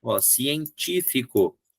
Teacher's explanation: Científico é a terceira de trás para frente. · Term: proparoxítona